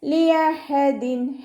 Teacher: ഹ തൊണ്ടയുടെ മധ്യഭാഗത്തു നിന്നാണ് വരുന്നത്, സൗണ്ടിനെ വ്യക്തമാക്കി കൊടുക്കുക. ഹംസയായി പോവാതെ ശ്രദ്ധിക്കുക കേട്ടോ.